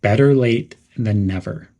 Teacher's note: Some pronunciation tips would be to stress the words better and never.